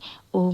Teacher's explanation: ऐसा स्वर जिसके उच्चारण में तीन मात्रा का समय लगता है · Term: प्लुत स्वर